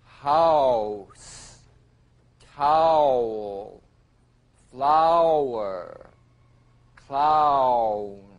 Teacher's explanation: another diphthong a combination of the largest lip opening number five ah with the smallest number one ooh